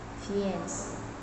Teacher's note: French origin, stress on the second syllable